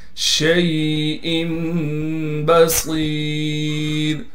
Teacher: صاد کو موٹا کر کے پڑھیں گے، صاد کے بعد یا مدہ ہونے کی وجہ سے صاد کو ایک الف کی مقدار کھینچیں گے، را کو باریک کر کے پڑھیں گے